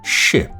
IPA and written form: ʃɪp (ship)